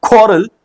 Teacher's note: Ko is the one that is being stressed upon